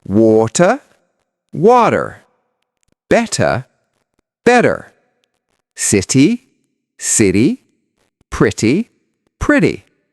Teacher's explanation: Instead of saying water, Americans say water. That T sounds like a soft D. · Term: flap t